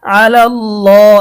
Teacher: এখানে খারা জবর থাকার কারণে এক আলিফ টান হবে, আলাল্লাহ, এবং আল্লাহ শব্দের লামটা মোটা হবে।